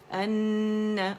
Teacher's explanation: یہ نون سے اپنے مخرج سے ادا ہوگا، ٹھیک ہے. اور اس کا غنہ ناک میں فیل کریں، کہتے ہیں نا نیزلائزیشن، تو وہ جو ہے اس کو فیل کریں جو غنہ کی آواز ہے.